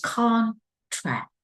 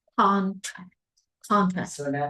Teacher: we stress the very first syllable